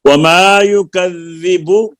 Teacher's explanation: یکذبو کی با کے اوپر جو پیش ہے اس کو لمبا نہیں کرنا